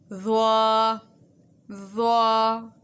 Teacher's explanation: ضا کا مخرج یہ ہے کہ جب زبان کی نوک ثنایا علیہ کے سرے سے لگے گی تو ضا ادا ہوتی ہے۔